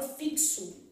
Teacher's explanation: posso ter um X com valor de KS